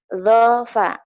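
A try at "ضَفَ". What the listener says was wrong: Do bukan zo tapi ini bulat ya. Do. Langsung gabung aja. Dofa. Iya, dofa.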